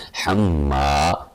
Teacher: حما ناک میں آواز جانی چاہیے